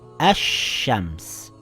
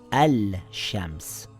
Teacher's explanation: sun letter now it reads ash shams and not al shams the sheen is doubled i didn't read ashams i read ash shams with two sheens